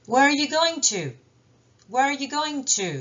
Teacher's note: En fin de phrase, les mots outils sont accentués, donc en forme forte.